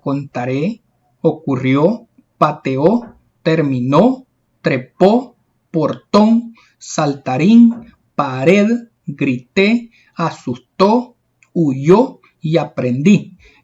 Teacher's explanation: estas son palabras agudas porque la mayor fuerza de voz la llevan en la última sílaba